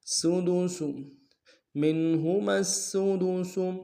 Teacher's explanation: لانا ہے، سین کے اوپر تشدید زور دیں گے، منہما السدس، سین کی سیٹی باریک ہوگی، آخر میں جو سین اس کی سیٹی باریک ہوگی